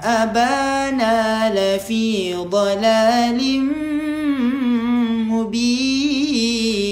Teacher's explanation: Tanwin yang tak selari jumpa dengan mim idgham ma'al gunnah. Masukkan dekat mim dengan dengung.